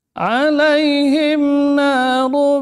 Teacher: Ya sukun sebelumnya kasrah mad lin ya alaihim mim sun nun apa izhar syafawi bibirnya rapat dan ditekan narum nun tipis na ru tebal tanwin kemudian mim idgham bighunah berarti bibirnya rapat dan ditekan juga